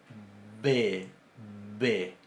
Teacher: Y en cambio, la B larga tiene una pronunciación bilabial.